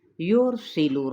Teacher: یرسل را ساکن ما قبل ضمہ ہے تو پر پڑا جائے گا، را جبکہ سین پہ سیٹی کو واضح کرتے ہوئے حرکت کو لمبا نہیں کریں گے، نہ ہی لام کی پیش کو۔